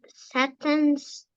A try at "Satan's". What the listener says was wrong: Okay, it's Satan's, so the A is a little more open, Satan's, and then the emphasis on unions, not unions, unions.